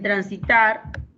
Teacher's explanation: En transitar, tar es la sílaba tónica.